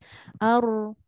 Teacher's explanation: cukuplah sekadar sekali sahaja mengangkat lidah ke langit-langit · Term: takrir